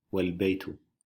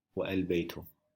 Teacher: Here the a is pronounced, but if it is preceded by wa, meaning and, the a is dropped, and the phrase is pronounced wal-baytu, not wa-al-baytu. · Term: dropped in pronunciation